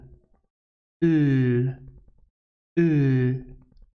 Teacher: It is a voiced alveolar lateral consonant. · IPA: /l/